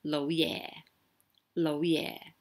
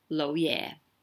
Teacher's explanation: make sure that yeah is pretty low so they're both low tones